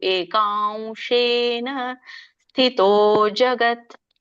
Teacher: ಕೃತ್ಸ್ನಂ ಏಕಾಂಶೇನ. ನೋಡಿ, ಕ ಆದ್ಮೇಲೆ ಅನುಸ್ವಾರ, ಮುಂದೆ ಶ ಇರೋ ಕಾರಣ ಅದಕ್ಕೆ ನಿಮ್ಗೆ ವ ಮೂಗಿನಿಂದ ವ ಹೇಳ್ಬೇಕು.